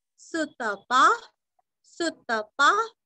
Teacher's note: सुरस्व और यहाँ पे पा पूरा पढ़ के विसर्ग का उच्चारण हल्का सा प